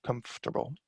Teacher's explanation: In order to show that there is a silent syllable in there, it's the or syllable